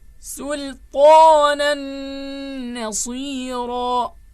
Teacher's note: Assimilation will be there with nasalization.